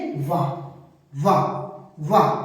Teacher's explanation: ऊपर के दांत नीचे के ओठों को संपर्क करते हो उन्हें बोलते हैं दंतोष्ठ